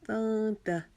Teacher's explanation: کے ساتھ ملائیں گے۔ لَإِلَّمْ تَنْتَهُوا، تا کو باریک پڑھیں گے، نون کے اوپر جزم آ گئی ہے، یہاں پر ہم اخفا کریں گے کیونکہ اس کے بعد حرف تا آ رہا ہے جو حروف